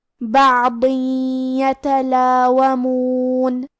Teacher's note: کلمت یتلاومون میں یا حروف الادغام بغنہ میں سے ہے، اور ادغام کا معنی ہے حرف کو حرف میں داخل کرنا، تو ہم یہ تنوین کو یا میں ملا کے غنہ اور تشدید کے ساتھ یہ حکم کو ادا کریں گے